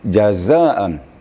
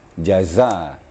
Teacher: jazaan itu harus agak keras bacaannya ya desisnya lebih keras jadi dipertemukan ujung lidah dengan ujung gigi kedua-duanya gigi dirapatkan jaza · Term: suara zainya